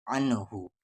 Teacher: واو پہ زبر وا، میم کے ساتھ الف ما، وا ما، یو کو غا میں یو، نون کے ساتھ یا نی، یو غنی، عین کو نام عن، ہا پر پیش ہو، عن ہو، نون ساکن کے بعد ہا ہے اور ہا حروف اخفا نہیں ہے، اس لیے اس نون کو صاف صاف پڑھیں گے